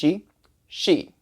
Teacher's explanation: in the English the English SH sound you're putting your tongue up against the front top of your mouth and you're blowing air through your teeth so it's an aspirated consonant the Chinese X is similar except